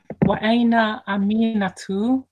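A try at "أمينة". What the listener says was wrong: Okay, so it's not Aminatu. It's not Aminatu. Yeah, so it's Amina. So we would say Amina. That's right, but also you were saying it like there's a ya, saying Ami. There's no Aminatu.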